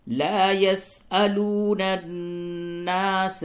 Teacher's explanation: اور نون مشدد ہے، یہاں پہ غنہ کیجئے ، لا يسألون الناس الحافا، الحافا حالت وقف میں ہوگا، اور